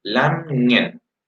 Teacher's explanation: Yo creo que no escucho la ng al final, como lamien, no. Sí la escucho al medio